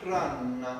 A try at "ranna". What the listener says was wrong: That's perfect. Just trust it. Stay right there in your speech.